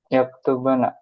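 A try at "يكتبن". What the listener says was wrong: enggak. Yaktuban. Jadi sukun. Nah, ini namanya khafifah. Nun taukid khafifah. Ringan. Nah, sakilah itu berharokat. Yaktuban, na. Tasydid berharokat. Kemudian kalau khafifah itu dijadikan sukun saja. Yaktuban. Itu nun taukid khafifah.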